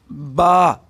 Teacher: با، یہ دونوں ہونٹوں کے تر حصے سے ادا ہوتی ہے، یعنی دونوں لپسوں کے خشک یعنی تر حصے سے۔